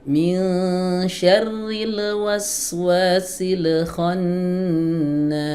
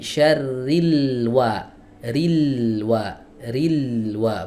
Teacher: Udah lam jangan dikasih qalqalah. Jadi syarril wa ril wa ril wa bukan ril ril wa ril wa.